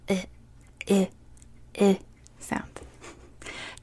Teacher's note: But there, I would write glottal stops, but these are all glottal stops. So, we're going to close our throat while we make this sound.